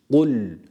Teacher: sakin ve cezimli olan lam harfine bunu da hareke vermekten kaçınarak okuyoruz yani dilimizi hemen bırakırsak hareke vermiş oluruz Evet dilimizi hemen bırakmıyoruz cezm hakkını verip öyle geçiyoruz diğer kelimeye